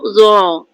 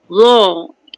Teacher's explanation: hujung lidah berada antara gigi atas dan gigi bawah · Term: huruf zo